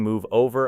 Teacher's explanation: into the opening vowel of it, and when practicing "move over," allow the V sound to continue gently before entering the next vowel without creating an unnecessary pause